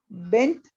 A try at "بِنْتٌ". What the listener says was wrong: بنتن، حرکت پوری پڑا کریں، بیٹی کو کیا کہتے ہیں؟ بنتن۔ دو بیٹیوں کو کیا کہیں گے؟